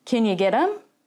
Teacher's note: i'm going to shorten and reduce can you to kenya